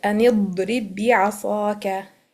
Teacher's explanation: Makhraj and sifat are the same, so it's called tamathul. So the ba will be merging into the ba mutaharrik.